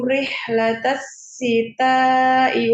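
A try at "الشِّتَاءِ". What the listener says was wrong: Ini pakai shin ya. Rihlatasyita'i. Tersebar ya. Suaranya di mulutnya tersebar. Rihlatasyita.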